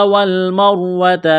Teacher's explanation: حرف کی حرکت کو دیکھنا ہے، جیسے یہاں پر میم ہے، میم کے اوپر زبر ہے تو اس را کو موٹا کرنا ہے اس زبر کی وجہ سے